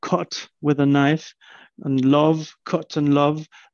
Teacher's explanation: the wedge in jamaican tends to get backed and raised to awe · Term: strut vowel